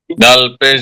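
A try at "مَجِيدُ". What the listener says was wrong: একটু টান হয়ে গেছে। মাজিদু, মাজিদু। এখন আমরা বুঝতে পারলাম যদি কোথাও হরকত থাকে তাহলে সেখানে টান দেওয়া যাবে না।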